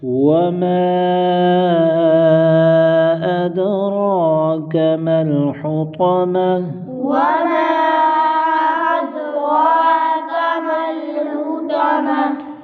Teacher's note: وما پر مد منفصل ہوگی، 2 2.5 4 الف تک کھینچ کر پڑھیں گے۔ اد، دال پر قلقلہ کریں گے، را پر کھڑا زبر ہے اور اس کو موٹا بھی کریں گے، ایک الف کھینچ کر پڑھیں گے۔